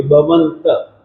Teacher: जिस समय आप अनुस्वार का उच्चारण करते हैं तो उस समय न की ध्वनि आपको आधि मिलेगी